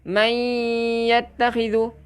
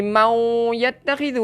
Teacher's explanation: Dengungnya bunyi macam ya, sebab dia memasukkan dekat ya. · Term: idgham bi gunnah